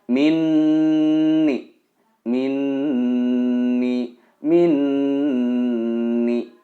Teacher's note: Ini adalah idgham bi gunnah. Harus ditahan 2 atau 3 harokat dan didengungkan.